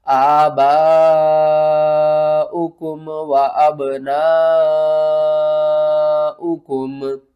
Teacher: حمزہ اسی کلمے میں ہے، مد متصل ہے، 5 الف کے برابر کھینچ کر پڑھیں گے۔